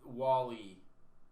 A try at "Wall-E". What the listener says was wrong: Why are you pronouncing it like that? Wall-E. Wally. It's spelt like Wall-E, but he's pronounced like the name Wally. Like Walter. It's not Wall-E.